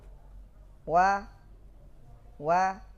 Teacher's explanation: makhrajnya dari mana antara dua bibir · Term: wau